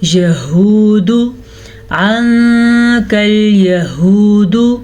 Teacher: ہا کے تلفظ کا دھیان رکھنا ہے کیونکہ یہ والا ہا حلق کے آخری حصے سے نکلتا ہے جس کا جو سینے سے ٹچ ہوتا ہے.